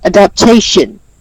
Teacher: So you stress the syllable tation in adaptation.